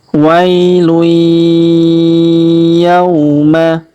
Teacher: Tanwin un huruf lun bertemu dengan ya bertasdid, maka tanwin unnya melebur masuk ke huruf ya bertasdid. Kita tahan dan tekan ya.